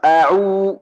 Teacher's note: Waktu huruf waw bibir ujung maksimal.